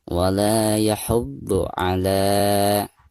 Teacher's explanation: Ala di sini dipanjangkan 2 harokat, dihukumi mad tabi'i atau mad asli ya